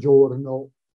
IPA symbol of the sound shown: ó